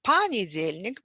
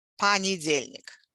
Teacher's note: the previous vowels in the previous syllables get reduced to something like ah